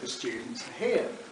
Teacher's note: I say the students are here and the and are weak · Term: weak syllables